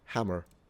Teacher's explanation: Yeah, the Irish pronounce their R's.